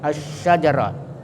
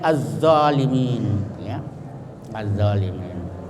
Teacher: Jadi lamnya itu tidak dibaca, tapi dimasukkan ke shin, huruf pertama dari sesudah lam, atau di tasdid asy-syajarah. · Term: idgham syamsiyah